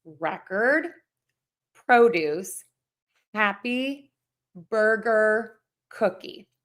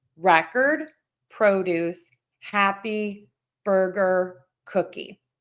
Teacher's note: I'm stressing syllable number one and I'm unstressing syllable number two.